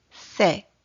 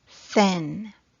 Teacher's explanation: the tip of the tongue has to be touching the back of the upper front teeth while pushing the air out between the tongue and the bony ridge behind the upper front teeth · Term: unvoiced th sounds